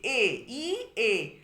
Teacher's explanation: আর জিভের অবস্থান হচ্ছে উচ্চ মধ্য। জিভটা উচ্চের দিকে, উচ্চ আর মধ্যের মধ্যে অবস্থান করছে। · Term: অর্ধ সংবৃত